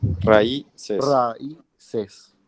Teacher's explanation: Se rompe el diptongo porque se carga la voz en la vocal débil, que está con una fuerte. Y están en sílabas distintas también. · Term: Hiato